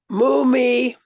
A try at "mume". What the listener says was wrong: Mume. There's no E. no E. mume. Don't say it like mumi. It's mume.